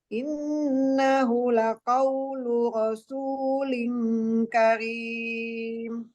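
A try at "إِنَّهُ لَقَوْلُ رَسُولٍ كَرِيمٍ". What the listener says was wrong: Nahunya ada matnya innahu gitu. Coba.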